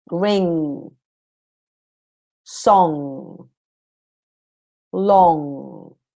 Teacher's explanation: Now, in this case, your G is silent. The G does not get pronounced as it normally would. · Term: The N and G